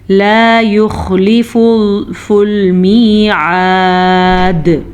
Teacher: जनाब, हम यहाँ पे वक्फ कर रहे हैं तो दाल मस्कून हो जाएगी, सुकून की हालत में हो जाएगी, तो दाल पे कलकला होगा